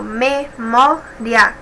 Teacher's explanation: a penúltima sílaba que é a mais forte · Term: paroxítona